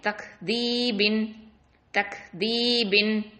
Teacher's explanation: தக்தீபின், அந்த இடத்துல கல்கலாலாம் கொடுத்துடக்கூடாது.